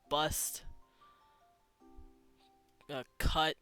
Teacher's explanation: It's that, the sound. It's a very lazy, central sound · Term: schwa